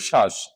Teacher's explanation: শব্দের প্রথমে থাকলে বফলার উচ্চারণ হবে না,